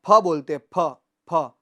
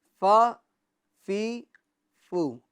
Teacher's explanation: اوپر کے دانتوں کا کنارہ اور نچلے ہونٹ کا تر حصہ، اس سے ہم ادا کریں گے تو فا ادا ہوگا